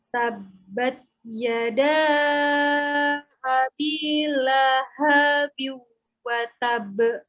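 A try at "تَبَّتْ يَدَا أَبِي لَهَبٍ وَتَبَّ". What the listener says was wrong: Tadi la-nya kayaknya panjang ya. Lahabiu. La-nya pendek. Tak sukun itu dia ada hamesnya sedikit ya. Bukan tabat saja, tapi tabat yada abi lahabiu wa tab. Bukan watab, tapi watab.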